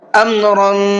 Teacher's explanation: را کو پر کر کے بھی پڑھنا ہے اور ساتھ ساتھ اخفا کر کے بھی پڑھنا ہے